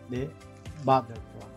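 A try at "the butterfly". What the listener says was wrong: Yo estoy escuchando que lo pronuncias como de, ¿verdad? De. Pero no es de. Es más. Va, tiene dos formas de pronunciar. Normalmente es da. Da. Como una A, ¿vale? Da. The mother. The mother. Pero a veces se pronuncia the, como una I. Por ejemplo, the apple.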